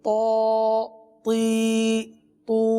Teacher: تو کو پر پڑھتے ہیں، تو حروف مستعلیہ میں سے ہے